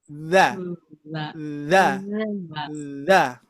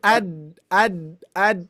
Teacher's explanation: Huruf huruf dza ini benar-benar ujung lidah